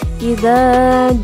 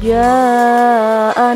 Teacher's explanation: Idza, panjang 2 ketukan. Jaa, panjang 5 ketukan.